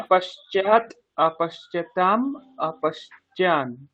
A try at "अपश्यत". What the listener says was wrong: पश्चा च च नहीं आएगा, है पश्यत, श्यत, अपश्यत अपश्यताम अपश्यन।